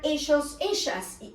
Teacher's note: Remember that we pronounce double L as a sh sound